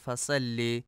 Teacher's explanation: فصل میں صاد کو سین پڑھا جاتا ہے فصل، جو کہ درست نہیں ہے۔